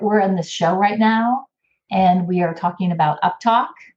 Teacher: I'll say, we're in this show right now, and we are talking about uptalk. And you hear how my inflection goes up, like I'm asking a question. My pitch goes up at the end of my sentence.